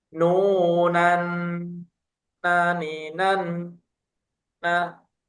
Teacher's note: Nun di sini ditahan kurang lebih tiga harakat. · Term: gunah